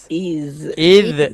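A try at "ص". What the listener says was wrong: Ha, sebut dah bunyi qalqalah dah. Bunyi qalqalah dah. Is. Qalqalah tak sah. Jangan buat yang tak sah tu.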